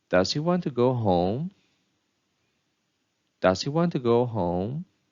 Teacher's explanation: the last content word takes a rising intonation.